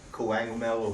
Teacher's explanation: The second K actually sounds like a G.